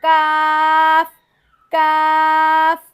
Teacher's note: जब तालू के नरम और सख्त हिस्से की मिलने वाली जगह से लगे तो काफ अदा हो जाएगा